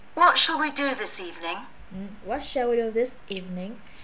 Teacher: What shall we do this evening? Đọc liên liên mạch, nó nhấn evening